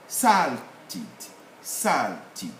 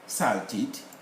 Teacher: we don't have the uh the r renunciation here salted salty we have to put the stress on the first syllable